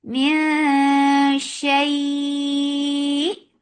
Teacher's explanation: You are keeping your tongue straight because this ikhfa is light, and you're preparing your mouth to say sheen, and you're holding the sound in your nose.